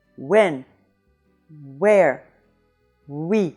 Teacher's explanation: So the semi-vowel starts from the vowel position of ou, but it quickly transitions into another vowel, as in oui. But when you say when in English, and see that your lips are in the position for ou